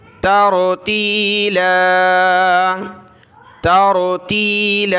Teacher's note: تا کو را کے ساتھ ملایا، را کو موٹا کیا